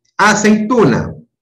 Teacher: primero tiene una vocal abierta y luego una vocal cerrada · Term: diptongos decrecientes